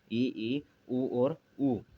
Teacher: जब जीवा का व्यवहृत भाग, जब जीवा का वह भाग जो क्रियाशील है, उसके जब वह भाग उच्चारण के लिए जब अधिकतम ऊंचाई पर हो तथा मुख संवृत यानी बंद हो जाता है और ऊपर और नीचे के दांत है जो पास पास आ जाते हैं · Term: संवृत स्वरों